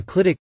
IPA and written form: ˈklɪtᵻk (clitic)